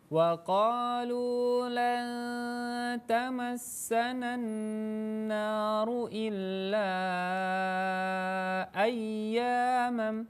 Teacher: Ya-nya dibaca panjang karena huruf ya di situ bertemu dengan huruf alif yang sukun. Jadi dia dibaca dengan bacaan matabi'i, harus dibaca dipanjangkan dua harokat.